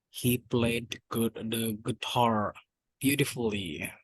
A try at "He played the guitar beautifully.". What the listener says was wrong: Beautifully. U-nya nggak bunyi. Beautifully.